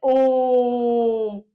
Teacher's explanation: इसका उच्चारण करते समय तीन गुना समय लगाना चाहिए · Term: लुप्त स्वर